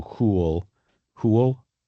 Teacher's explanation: w is sort of like an oo, and the y is sort of like a schwa